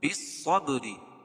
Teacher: صاد کو پر پڑھیں گے، کیوں؟ اس لیے کہ حروف مستعلیہ میں سے ہے، اور با پر قلقلہ، اور با حروف قلقلہ کے 5 حرفوں میں سے ہے، جب بھی ان پر جزم ہوگا ان 5 حرفوں پر چاہے وصل ہو، یہ رکنے کی حالت میں ہو یا ملانے کی حالت میں، وہاں قلقلہ ہوگا۔